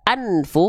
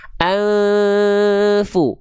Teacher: Ketika disamard dengungkan bunyi n-nya jadi samar. Jadi enggak jelas en tapi e. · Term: samar dengung